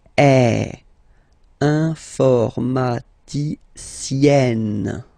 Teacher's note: Remember, E and then double N, or then it could be double L or double consonant here. You open your E, so it's E.